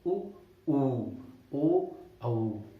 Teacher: तो वृत्ताकार, इसमें हमारा क्या है, जैसे आपका ऊ, तो ऊ जब मैं प्रोनाउंस कर रहा हूँ, उच्चारण कर रहा हूँ ऊ का, उस टाइम पे मेरे जो होंठों की आकृति है वो ओ हो जा रही है, ठीक है, वृत्तमुखी हो जा रही है, वृत्त की तरह हो जा रही है।